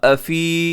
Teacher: अब अफी यहाँ या मद्दा है, यहाँ लंबा कीजिएगा। अफी और आगे वाव मद्दा है आखिर में, उसे भी आप थोड़ा सा 1 सेकंड तक लंबा कीजिएगा दोनों को।